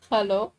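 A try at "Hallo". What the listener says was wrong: No, it's like you have hard L in English, but in German it's like soft.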